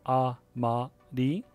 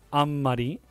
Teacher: there are three separate syllables and you need to pronounce each syllable at exactly the same length when you say each one so ah ma di the beat between all three of those